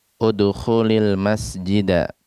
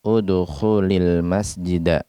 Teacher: Dan seandainya setelah fi'il amr ini kita dapati ada al di sana, di awal kata berikutnya, maka sukun yang ada di akhir fi'il amr ini berubah menjadi kasroh